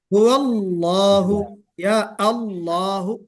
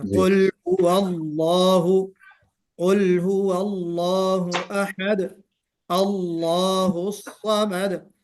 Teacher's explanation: اس میں لام کو پر کرنا ہے